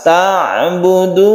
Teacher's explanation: Wa qadha rabbuka alla ini juga mad tabi'i atau mad asli, membacanya satu alif kemudian ta'budu sukun ain itu kita baca tawassut, artinya tengah-tengah saja, tidak syiddah maupun tidak rokhwa, tidak terlalu ditekan juga tidak terlalu terlepas, jadi di tengah-tengah membacanya lemas.